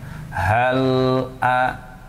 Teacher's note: di sini lam sukun ditahan sebentar atau sejenak saja.